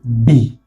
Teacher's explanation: It's a plosive sound because my lips, my labias, kind of hinders the coming out of the sound. I have to release them for the sound to come out. Unlike when I call A, it's just like a gush of wind just flows out of me.